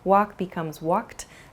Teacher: you might hear a word like walked also which has a sort of t sound about it walk becomes walked started becomes started and id sound and then